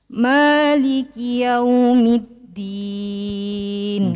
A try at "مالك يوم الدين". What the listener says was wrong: شوية تحتاج إلى تدريب قريب إلى التاء.